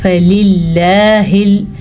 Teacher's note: फ़लिल्लाहिल, लफ्ज़ अल्लाह से पहले ज़ेर है, ये लाम के नीचे जो ज़ेर है, इसकी वजह से लफ्ज़ अल्लाह बारीक पढ़ा जाएगा